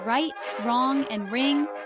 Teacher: it is not rolled or trilled but is rather smooth and continuous